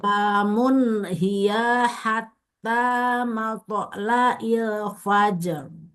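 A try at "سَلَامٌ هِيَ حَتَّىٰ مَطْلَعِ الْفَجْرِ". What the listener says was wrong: Hiya dipendekin. Salamun hiya hatta. Langsung. Hiya hatta.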